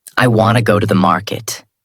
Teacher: Each word is separate. Each word is clear but disconnected. This sounds slow. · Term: word by word